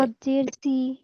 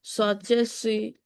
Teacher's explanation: সদ জের সি। সি বললে হচ্ছে সিনের মতো হয়ে যাচ্ছে। মোটা করে উচ্চারণ করতে হবে।